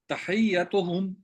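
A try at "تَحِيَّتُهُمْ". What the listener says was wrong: نہیں حیا نہیں ہے جی، ہاں کے نیچے زیر ہے.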